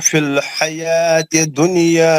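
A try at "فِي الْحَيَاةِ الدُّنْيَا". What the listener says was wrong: जहाँ पे तजदीद है ना, सख्ती से मिलाना है. हयातिद दुनिया, हयातिद दुनिया.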